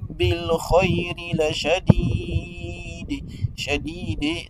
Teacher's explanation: la lettre dal doit être lue avec قلقلة